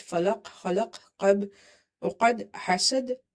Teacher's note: Bouncing will be weak if these occurs between some word. But if they come at the end of the word like this, falaq, khalaq, qab, uqad, hasad, then qalqala will be strong.